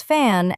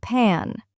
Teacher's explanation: The airflow stops briefly and then releases. The sound F on the other hand is a fricative sound. The air flows continuously through a narrow opening.